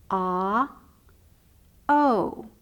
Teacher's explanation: when i say oh my mouth has turned into a small circle